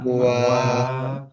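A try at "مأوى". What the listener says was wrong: Ya, jadi macet ketika sukun. Ma'wa, jangan ma'wa. Jangan macet. Jangan mantul ataupun ada sisa.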